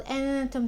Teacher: the إخفاء of the noon before the letter ta